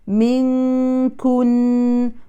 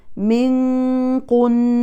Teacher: الكاف لا تفخم حتى لا تتحول إلى قاف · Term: ترقيق الكاف